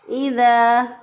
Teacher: इज़ा ज़ा ज़बर इज़ा, अलिफ मद्दा है, एक अलिफ के बराबर इसको भी लंबा किया।